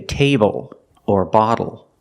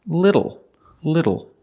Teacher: it's a short sound plus a dark l o o like when you say table or bottle it's a